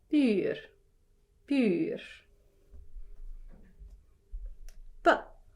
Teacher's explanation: you shouldn't feel a puff of air.